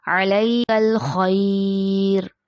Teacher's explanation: और यहाँ पे एक और कायदा भी हो रहा है, या साकिन उससे पहले ज़बर या लीन, जो कि हम आपको पहली वीडियोज़ में बता चुके हैं कि या लीन पे जब हम आखिर में आता है तो उस पे जब वफ़ किया जाता है तो उसको एक अलिफ से ज़्यादा खींचकर वफ़ किया जाता है